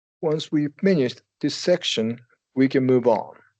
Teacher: And I'm following the pattern, right? I emphasize finish. I go up for the pause, and then I go.